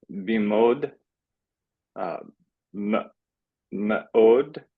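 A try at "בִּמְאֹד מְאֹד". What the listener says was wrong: Yeah, I would read it as bimod me'od. Yeah, we want to have that glottal stop in there.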